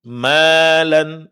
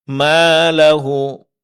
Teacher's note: Ini contoh-contoh mad yang semuanya dipanjangkan dua harakat.